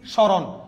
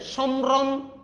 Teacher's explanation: মফলা যদি শুরুতে থাকে এটার উচ্চারণ হবে না মফলাটা